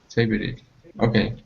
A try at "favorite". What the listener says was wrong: You're still saying favorite. 2 syllables. Whenever you say it quickly, it kind of pops back in.